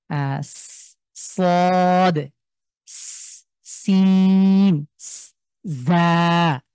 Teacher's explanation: সাফির মানে হলো এই যে ইস একটা আওয়াজ আসছে সদস সিম জা তো এই একটা আওয়াজ একটা সফট একটা আওয়াজ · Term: সফিরের লেটার